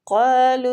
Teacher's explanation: قا مستعلیہ حروف ہے، پور پڑھیں گے اور کھینچیں گے بھی، الف مد ہو رہی ہے۔